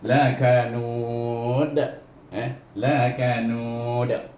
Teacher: Ya, kemudian huruf dal kita ingat huruf qalah, maka kena juga dibaca dengan mad arid li sukun, dimatikan dengan qalqalah, lantunan.